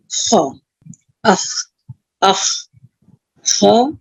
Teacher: और एक हम हैवी लेटर ले लेते हैं आगे, खा। खा जो है ये भी हलक का ही लेटर है, और कहाँ से अदा होता है ये, अदना हलक से, हलक का ऊपर का हिस्सा।